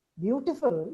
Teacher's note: You say, yes, beautiful, but I know something more. Beautiful, you say it with a fall rise, and it has an implied meaning which is derogatory.